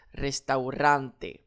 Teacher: Alors, j'accentue sur mon avant-dernière syllabe